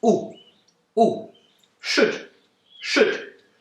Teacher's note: The u sound is short, and you put your lips out a little bit to make the sound. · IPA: /ʊ/